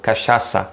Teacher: the ch here sounding more like an sh in english